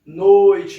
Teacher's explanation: Repara então que o som do O sai mais forte, um pouco mais encorpado. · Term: ditongo decrescente